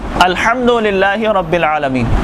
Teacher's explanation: अल्हम्दुलिल्लाहि रब्बिल आलमीन, दो हुरूफ इस्तेमाल हुए। लफ्ज़ अल्हम्दु के अंदर हा जो दरमियाने हलक से और आलमीन के अंदर आइन जो दरमियाने हलक से